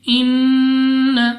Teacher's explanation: سب سے پہلے ہمارے پاس نون مشدد غنہ کر کے پڑھیں گے